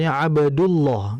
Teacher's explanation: Huruf dal adalah huruf yang tipis, tetapi perhatikan harakatnya. Jika dal memiliki dhammah harakat, maka lam menjadi kental. Sebagai contoh, "Abdullah." Kita tidak bisa membacanya sebagai "Abdullah." Karena aturannya adalah huruf lam dalam Allah harus dibaca tebal.